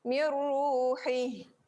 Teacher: Hak yang pedas, hak yang berada di tengah. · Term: huruf ha